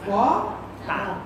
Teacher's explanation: মহাপ্রাণ ধ্বনিকে অল্প প্রাণে রূপান্তরিত করি।